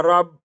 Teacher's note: रा ज़बर को बा के साथ मिलाएंगे, बा मुशद्दद है, इसे दो बार पढ़ेंगे।